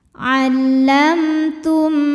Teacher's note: Wa ma'allam, kemudian ada hukum idhar syafawi karena ada mim sukun menghadapi huruf selain mim dan ba. Di sini hurufnya adalah huruf ta, maka mim sukun kita bunyikan dengan jelas